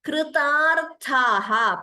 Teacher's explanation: Please note the first ta is alpa prana, only second ta is mahaprana.